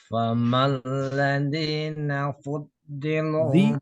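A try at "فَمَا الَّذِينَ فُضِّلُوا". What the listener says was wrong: Di kurang banyak. Famalladina fuddilu.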